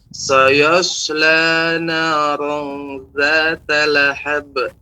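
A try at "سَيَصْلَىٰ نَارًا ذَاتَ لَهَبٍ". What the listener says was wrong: Mulut tidak usah moncong, jangan. Tapi gigi ada menggigit. Nah, seperti merapat karena dia ada sifat namanya sofir, suara burung.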